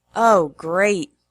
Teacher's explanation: if the exclamations are said in a different way, with a flat tone, they can express a negative attitude like sarcasm or disapproval